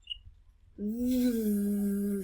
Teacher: it should make your lips vibrate it should tickle